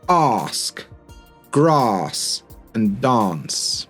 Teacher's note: in the south of England, you know, Oxford, London, Brighton, whatever, you're quite likely to get this longer a sound